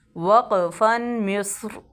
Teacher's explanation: میم صاد زیر مس، را زبر را، مصر، وقفاً مصر. ٹھیک ہے، مصر سواد کو پر ادا کریں گے، را کو بھی پر ادا کریں گے